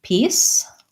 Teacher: i have the tense e and the s sound voiceless